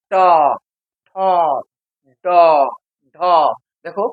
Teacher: প্রত্যেকটা বর্ণ উচ্চারণ করার সময় জীব গোল হয়ে মধ্যেকে স্পর্শ করছে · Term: প্রতিবেষ্টিত বর্ণ